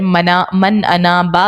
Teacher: اظہار کا قاعدہ لگایا اور غنہ یہاں پر نہیں کریں گے